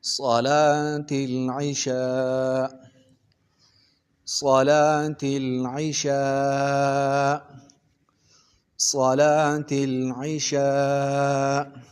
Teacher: وقف کی حالت میں یہ حمزہ ساکن ہو جائے گا